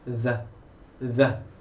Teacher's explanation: 우리 th 소리 번데기 소리에 그대로 성대의 소리만 입히시면 the 이런 소리들이 납니다. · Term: 유성음 the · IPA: /ð/